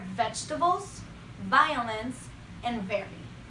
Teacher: The upper backside of the bottom lip is pressed very lightly into the bottom of the top teeth. Air is pushed out the mouth between the top teeth and the upper backside of the bottom lip. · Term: V sound